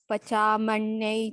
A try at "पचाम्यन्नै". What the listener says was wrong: पचा मैं नहीं, पचाम्यन्नै। म्य म्य।